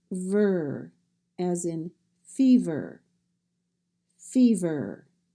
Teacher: We do not say a vowel sound in that syllable, so it's just ver, as in fever, fever.